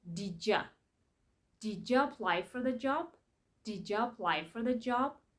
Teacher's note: The D at the end of did and the Y at the beginning of you make the sound J.